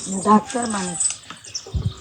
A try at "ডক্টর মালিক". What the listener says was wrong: হালকা একটু ভুল আছে ডক্টর মালিক হবে ও মানিক বলতেছে